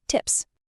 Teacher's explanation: If your throat vibrates at the end, like the D in bed, the plural sounds like a Z, beds. If it doesn't vibrate, like the P in tip, it takes an S sound, tips. But what about the special cases?